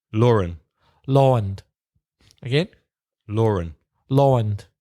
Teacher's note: Southeastern English accents put in more R than Irish or American · But what's interesting with these words, there's no R there. If you look at Lawand, there's no R, but you pronounce an R when you connect them.